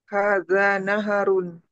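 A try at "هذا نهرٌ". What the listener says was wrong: haknya sukun. Nah, hadza nahrun gitu.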